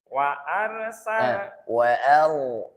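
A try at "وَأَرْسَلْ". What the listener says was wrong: Ro-nya itu, Pak. Wa arsa. Hanya tipis, Pak. Wa arsala.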